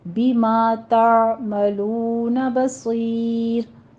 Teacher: صاد کو پر پڑھیں گے، آگے را بھی باریک ہو جائے گی اس کے ساتھ، ٹھیک ہے، کیونکہ پیچھے یا رہی ہے تو صاد کو پر پڑھتے پڑھتے آگے را کو پر نہیں کر دینا ہے، اس کو باریک رکھنا ہے.